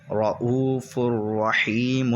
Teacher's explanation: ادغام بغیر گننے کے ہوگا کیونکہ را اور لام میں گنہ نہیں ہوتا ہے · را موٹا ہوگا کیونکہ را پر زبر ہے